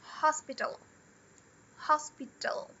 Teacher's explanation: mas não tem o al no final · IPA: /ˈhɒspɪtl/